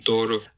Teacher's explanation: There's no closure voicing during the stop phase at the beginning. You just kind of go from silence or background noise to just the release burst at the start here. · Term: voiceless D